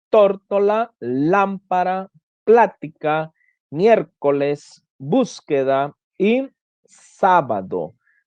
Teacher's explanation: esdrújulas como tórtola lámpara plática miércoles búsqueda y sábado llevan la el acento por la pronunciación mayor en la antepenúltima sílaba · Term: palabras esdrújulas